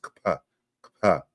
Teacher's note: It's a voiceless labial velar sound